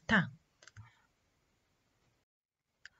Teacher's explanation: ta is articulated by tip or blade of the tongue making هذه الجزء المقدمة اللسان making a firm contact against the teeth ridge.